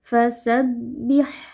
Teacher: Huruf ha memiliki sifat hamas dan rakhawah. Jadi kita alirkan nafas dan suara.